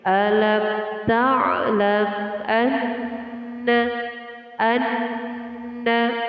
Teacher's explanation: Mim mati bertemu dengan huruf alif dinamakan hukum bacaan izhar syafawi. Izhar syafawi dibaca dengan jelas mim matinya.